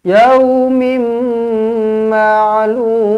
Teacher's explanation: Jumpa dengan mim sabdu, terus rapatkan bibir, dengungkan 2 harakat.